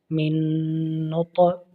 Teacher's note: طا حرف کلکلہ ہے، اس میں کلکلہ کریں گے۔